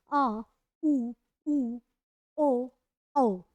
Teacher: पश्च स्वर जो कि पूरा जीभ के पीछे वाले भाग से सक्रिय रहेगी